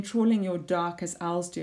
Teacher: this plosive D alliteration, dark and do, these hard sounds to emphasize that.